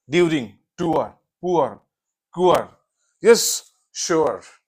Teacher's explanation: उआ, that is ओ आ, पहले ओ है फिर आ है, उआ। ये किस वर्ड्स में आते हैं, जैसे ड्यूरिंग, यस, ड्यूरिंग, टूअर, पुअर, कुअर, यस, श्योर, यस।